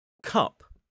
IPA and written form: kʌp (cup)